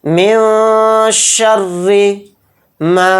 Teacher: من شر، من شر، نون کو ظاہر نہیں کرنا ہے، نون کو ناک میں چھپانا ہے۔ را کو یہاں پر باریک پڑھیں گے کیونکہ را کے نیچے زیر ہے۔ من شر ما، میم الف زبر ما ہے، یہاں پر الف مد آ گیا میم کے ساتھ، تو ما کو یہاں پر ایک الف کی مقدار ہم کھینچیں گے، ما اتنا۔